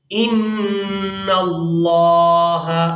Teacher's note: نون مشدد پر غنہ کریں گے اور اس کے بعد لفظ اللہ کے لام کو پورا ادا کریں گے